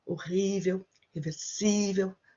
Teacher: So the stress comes not the last syllable, but the one before.